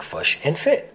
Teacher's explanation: the kit-foot vowels are reversed for the words fish and foot to sound like fush and fit